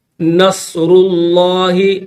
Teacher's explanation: یہاں پر لفظ اللہ سے پہلے والا جو حرف ہے را، اس کے اوپر پیش ہے تو اس وجہ سے اس کو موٹا کر کے پڑھیں گے